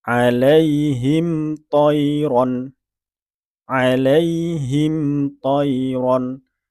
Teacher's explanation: cara membaca izhar syafawi sesuai dengan namanya izhar dia dibaca dengan jelas jadi mim mati dibaca dengan jelas